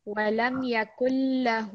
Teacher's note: 1 second on the lam and 2 seconds on the ha.